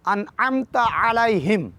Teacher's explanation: علیہم کی بھی عین ہے، واسطے حلق سے ادا کریں گے اور ہا کو بھاری پڑھیں گے نہ کہ ہلکا · عزیزان گرامی، انعمت ان کو سمپل اور نارمل طریقے سے ادا کریں گے، جبکہ عین کو پڑھتے ہوئے گلے پہ زور دیں گے، ہلکے درمیانی حصے پہ مڈل آف تھروٹ زور دے کر پریشر دے کے پڑھیں گے